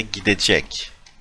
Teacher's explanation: It gets softened. The T in gitmek turns into D. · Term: consonant softening